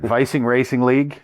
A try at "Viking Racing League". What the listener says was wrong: Viking Racing League. Not Viking Racing League. You got a little quick there.